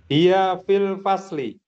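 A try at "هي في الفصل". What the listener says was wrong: Masya Allah, mumtaz.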